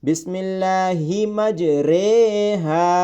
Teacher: مجریہا، اس کو ری نہیں پڑھا جاتا بلکہ مجریہا پڑھا جاتا ہے۔ معروف طریقہ ری ہے، لیکن یہ قرآن پاک کا واحد مقام ہے جہاں حرف کو معروف کے بجائے مجہول طریقے سے پڑھا جاتا ہے۔ بسم اللہ مجریہا، اس را کو را امالہ کہتے ہیں اور یہ را امالہ قراءت حفص میں مجہول پڑھی جاتی ہے۔